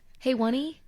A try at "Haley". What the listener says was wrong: actually pronounced Haley. You just don't pronounce the one like a like a one. You pronounce it like an L.